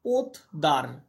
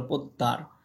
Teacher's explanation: দয়ের প্রভাবে তটা দয়ে পরিণত হলো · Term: পরাগত সমীভবন